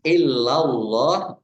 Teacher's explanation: Allahnya dibaca tebal karena harokat di depannya fathah. Lam fathah berdiri mat tabi'i, tetapi karena bertemu dengan huruf terakhir yang dibaca sukun karena waqaf maka menjadi mat arif lis sukun.